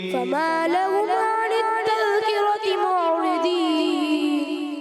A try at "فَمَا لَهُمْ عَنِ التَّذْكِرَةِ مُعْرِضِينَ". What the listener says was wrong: جلدی کرتے ہیں، کیا ہوتا ہے؟ فما لهم عن التذکرة، تو ہم میم کی ادائیگی بھی کلیئر کریں گے، غنہ نہیں کرنا. فما لهم عن التذکرة معرضین.